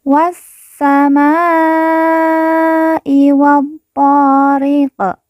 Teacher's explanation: qaf di ujung kita sukunkan atau kita matikan karena waqaf atau berhenti.